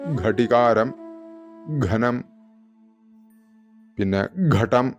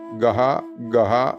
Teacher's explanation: ഘ അതിന് ഗാനം ഗീതം എന്നൊക്കെ എഴുതുന്ന ഗ അതിനുകൂടെ ഹ ചേർക്കുക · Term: മഹാപ്രാണനായിട്ടുള്ള അക്ഷരങ്ങൾ